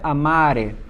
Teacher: Então, nós precisamos olhar as 2 últimas sílabas dele. Vemos que se trata de uma palavra paroxítona e o acento está em a,